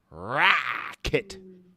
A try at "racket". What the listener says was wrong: Rack, not wreck. Rack. Wreck it means destroy it.